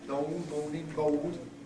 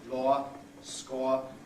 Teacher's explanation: Before we get the O diphthong, this splits in two allophonically, really, so that before consonants you get O, long, moaning, bold, and finally, morpheme finally, you get OR, so lower, score, and to be bored.